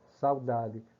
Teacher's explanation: Quase que você não escuta o som do U. É aquela passagem, né? Do U para a sílaba da. A passagem rápida. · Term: semivogal